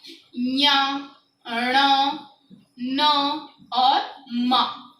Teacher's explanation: तो ध्यान से समझना, अनुनासिक ऐसे वर्ण जिनको मुंह के मतलब कंठ, तालु, मूर्धना, दंत, ओष्ठ के अलावा भी नाक से बोला जाए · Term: अनुनासिक वर्ण